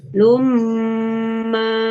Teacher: Jadi ketika ada tanwin seperti ini atau nun sukun bertemu dengan salah satu dari yang 4, maka cara membacanya tanwinnya atau nun sukunnya dimasukkan atau dilebur ke huruf yang di depannya ya, dan disertai gunnah.